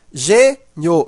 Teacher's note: Veja que esse i, ele é pronunciado fraco, ele está ao lado de uma vogal e ele tem um som de i. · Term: semivogal